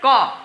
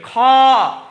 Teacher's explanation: क का जब आप उच्चारण कीजिएगा तो उसमें आप देखिएगा इसमें काफी कम सांस की आवश्यकता होती है। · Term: अल्प प्राण